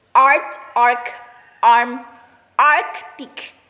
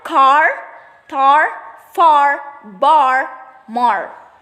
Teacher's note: the low central vowel